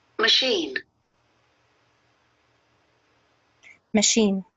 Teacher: So it's not a full A sound. It's not like cat or bat. It's machine. It's a short vowel sound. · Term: schwa